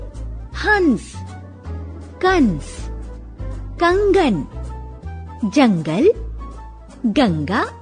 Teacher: अंग, इसे अनुस्वार कहते हैं। इसका उच्चारण नाक से होता है। अनुस्वार का चिन्ह होता है, जैसे हंस, कंस, कंगन, जंगल, गंगा आदि।